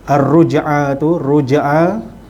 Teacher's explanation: ra dibaca dengan tebal kerana huruf ra berbaris di depan. Baris depan dengan baris atas bacanya tebal.